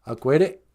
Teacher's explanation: Little hyphen is a glottal stop. So you stop real quick.